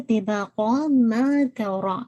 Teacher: ما کو آپ نے انشاءاللہ 2 کاؤنٹ پڑھنا ہے